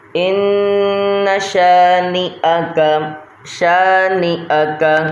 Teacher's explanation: تو اس کو غور سے سن لیں، اس والے نون کو نہیں کھینچنا، کیونکہ دیکھیں یہاں پر تو الف ایڈ ہے پر یہاں پر الف نہیں ہے، صرف ہم نے ایک الف کی مقدار میں غنہ کرنا ہے